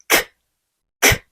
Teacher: C가 나타내는 대표적인 소리는 크, 크, 크입니다. 이때 목에 손을 대어 보시면 크, 크 여기에서 울림이 느껴지지 않는 게 중요해요.